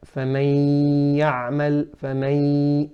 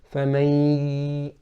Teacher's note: there is a nasal sound, there is a غنة coming from the nasal cavity with the idgham with غنة